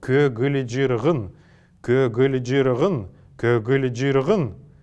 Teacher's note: слово «көгілжіргін», имеющее 6 согласных подряд, должны прочитываться с фоновыми звуками между каждым из этих звуков